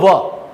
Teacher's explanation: ભાઈ દંતોષ્ઠ્ય વ્યંજન એટલે એવો વ્યંજન કે તમે ઉચ્ચારણ કરો છો ત્યારે તમારો દાંત અને હોઠ બંને પ્રતિક્રિયામાં આવે છે. બોલો વ, તો તમારા જે ઉપરના દાંત છે નીચેના હોઠને સ્પર્શે છે